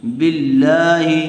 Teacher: لفظ اللہ کی لام سے پہلے والے حرف کے نیچے زیر آئی ہوئی ہے، اس لیے لفظ اللہ کی لام کو باریک پڑھیں گے